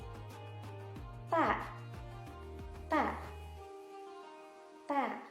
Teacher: Dan ketika mengucapkan huruf ta, yakni dipertemukan antara ujung lidah dengan pangkal gigi tadi. Jadi ujung lidah kita ketika mengucapkan huruf ta akan menempel sebagian pada gigi dan sebagian pada gusi.